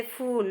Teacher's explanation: बड़े ऊ के उच्चारण में अधिक समय लगता है